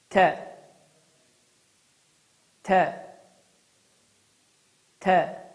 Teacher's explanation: dilimizin ucunu yuxarı kəsici dişlərin kökünə vurmaqla Azərbaycan dilində olan T səsinin incə formasıdır. Məxrəci bir daha təkrarlayıram, dilimizin ucunu yuxarı kəsici dişlərin kökünə vurmaqla Azərbaycan əlifbasında olan T səsinin tamamilə oxşarı və ya incə formasıdır. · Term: T hərfinin